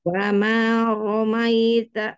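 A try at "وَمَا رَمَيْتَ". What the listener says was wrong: Jangan ditarik-tarik ke samping. Ingat, ke bawah aja, bawah aja.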